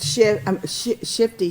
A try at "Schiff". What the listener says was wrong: Schiff. Just keep it down. Leave the T's home.